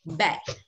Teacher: mình không đọc là bét bét là bờ của Việt Nam mình mà mím môi lại